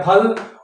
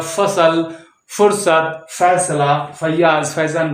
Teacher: तो फ जब हम हिंदी के शब्द बोलेंगे, हिंदी के शब्दों में होता है फ और उर्दू और अंग्रेजी के शब्दों में होता है फ। तो जब हम फ बोलेंगे तो होंठ हमारे चिपक जाएंगे, आपस में सट जाएंगे, जुड़ जाएंगे। और फ बोलेंगे तो दोनों होंठ अलग अलग रहेंगे, फ।